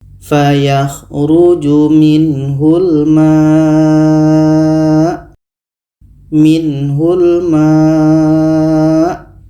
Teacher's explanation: Kita panjangkan 4 sehingga 5 harokat untuk mat wajib mutasil.